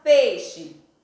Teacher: Então, na palavra peixe, eu tenho E, que é considerado uma vogal com um som mais forte, e o I, considerado uma semivogal, que é pronunciada com um som mais fraco